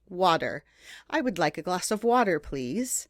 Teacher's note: words like water w a t e r we exchange that t sound for a d sound